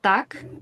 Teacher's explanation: in Ukrainian, we also have this p, t, k, but for us, they're not aspirated. We don't need to add any air while we're pronouncing them. So in Ukrainian, it can be, for example, the word tak, and this t is a bit different than English t, because in English we have to add more air when we say it, and the same is with p and k.